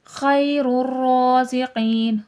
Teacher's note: را موٹا کر کے پر کر کے پڑھا جائے گا